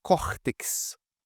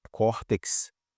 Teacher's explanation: A penúltima sílaba tônica é a mais forte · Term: paroxítonas